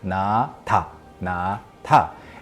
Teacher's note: Na has a little more of a run-up into it, like na, but ta is very abrupt.